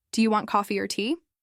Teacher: Your voice naturally rises on coffee and falls on tea. If you reverse it, "Do you want tea or coffee?" the emphasis shifts. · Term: contrastive stress